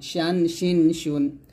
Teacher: শিন জিব্বার মধ্যখান উপর তলার সঙ্গে লাগাবেন